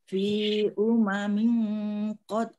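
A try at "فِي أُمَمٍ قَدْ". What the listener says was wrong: Fi umamin, mimnya tidak ada tasdidnya.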